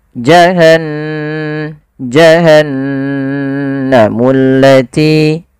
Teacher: Dia menandakan di situ bacaannya adalah bacaan gunnah. Gunnah yaitu membunyikan suara hingga masuk ke rongga hidung kita. Maka suara nunnya dimasukkan ke rongga hidung. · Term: ghunnah